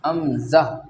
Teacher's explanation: उसके बाद में हमज़ा, तो अब हमज़ा जो है ये हमज़ा इस तरह अदा होगी, अक्सल हलक, यानी हलक के नीचे वाले हिस्सा, नीचे वाला हिस्सा जो सीने से करीब है वहाँ से हमज़ा अदा होती है, हमज़ा। और आप निशान भी देख सकते हैं ये कि हलक के कौन से हिस्से से, यानी किस जगह से हमज़ा अदा हो रहा है।